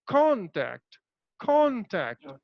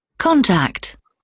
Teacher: I'm stressing upon con, but I'm just politely delivering the word tact